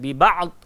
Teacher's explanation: ain memang keluar dekat tengah-tengah halqum ni, tengah-tengah tekak kan.